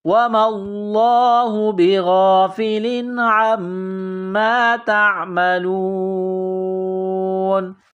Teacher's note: جب سٹاپ کریں گے تو نون کو سائلنٹ کریں گے